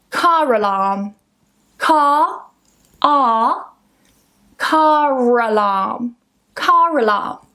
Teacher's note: if I say these words in isolation, that r becomes silent, but if I join them together, we link them together with a r. So, car alarm. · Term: Linking R